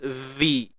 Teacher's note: makhraj bagi huruf zal, keluarkan sedikit hujung lidah kita